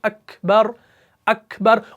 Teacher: तो ये हो रहा है ना, ये जिस तरीके से अकबर में है काफ और ता, देखिए काफ में भी सिफत हम्स हो रही है